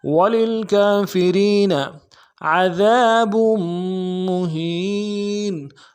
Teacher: عین کو موٹا ادا کرنا ہے، دال کو باریک ادا کریں گے، دال کے ساتھ الف مدہ ہے، ایک الف دال میں کھینچیں گے۔